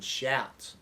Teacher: hear that ow, sliding sound a little bit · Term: diphthongs